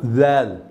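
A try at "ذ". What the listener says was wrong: পাতলা করে, জাল। আমার সঙ্গে বলেন জাল, জিহ্বাটা একটু বের হবে, জাল।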